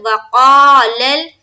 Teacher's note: لام کو لام سے ملائیں گے زبر کی حرکت کے ساتھ